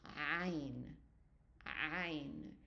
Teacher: So it's almost like you push in your throat and you narrow in it, as if someone is choking you. Instead of just an sound, it's ayn.